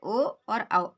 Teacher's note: कंठ और ओष्ठ दोनों की सहायता से बोले जाते हैं, इन्हें कंठोष्ठ वर्ण कहते हैं।